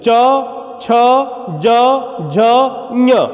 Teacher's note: जब हम च छ ज झ ञ का उच्चारण करते हैं तो हम देखते हैं कि हमारी जिह्वा जो है वो तालु को जाकर के स्पर्श कर ले रही है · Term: तालव्य